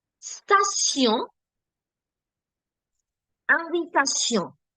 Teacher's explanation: even though the sound of the alphabet T is T, I'm not saying Tion. I'm saying Sion. This is because of the combination T-I-O-N put together.